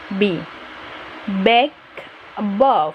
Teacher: For example, the B and P sound are both made with the lips. However, when we say B, we use the vocal cords to make that sound. The B sound is a little longer and stronger.